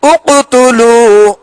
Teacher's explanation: اب پیش میں ہونٹ گول کریں گے.